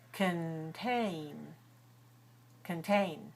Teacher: The first syllable is short and weak. So that one is the reduced sound.